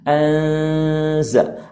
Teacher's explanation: ada makhraj yang keluar dari rongga hidung ataupun yang disebut dengan khayshum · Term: gunnah